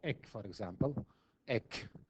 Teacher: the back of the tongue touches the velum, and the velum is raised. When it is raised, it closes the area here. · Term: oral sounds